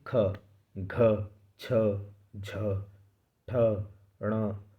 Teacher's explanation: महाप्राण व्यंजनों के उच्चारण में हकार ध्वनि रहती है